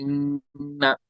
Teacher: तो आपको आप गुन्ना करना होगा, आप पढ़ेंगे इन्ना, तो कहाँ से निकला है, इसका मखरज है नाक का बांसा, खैशरूम जिसको कहते हैं, जिसको इंग्लिश में नेजल कैविटी कहते हैं, और गुन्ना को नेजलाइजेशन कहते हैं